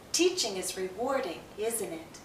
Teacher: There's a connection between the use of a tag question and its pronunciation. When we're simply commenting, the pattern often is to have falling intonation. Our voice goes down.